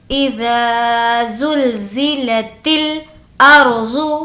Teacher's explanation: را کو موٹا پڑھیں گے کیونکہ را سے پہلے زبر ہے